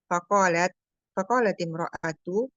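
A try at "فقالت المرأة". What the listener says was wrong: Faqalatil mar'atu. Mar'atu ada alifnya dibaca al-mar'atu.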